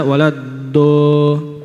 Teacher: yang keluar adalah huruf dal dengan tafkhim, dengan tebal